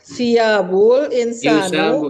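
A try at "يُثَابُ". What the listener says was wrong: Yusabu. Bukan siab, yusab.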